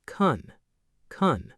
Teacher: Collapse the wide vowel down to a schwa. Hit a brief back of tongue's click on the soft palate and drop straight into an N. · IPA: [kən]